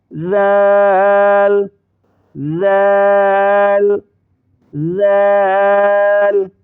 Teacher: زبان کو تھوڑا سا نکالا، دونوں دانتوں کے درمیان دیا